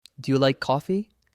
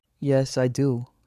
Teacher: The rise shows curiosity. The fall shows certainty. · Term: rise fall pattern